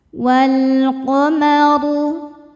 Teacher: Kemudian alif lamnya dinamakan alif lam qamariyah sebab alif lam menghadapi huruf qamariyah yaitu qaf, maka lam dibaca dengan jelas.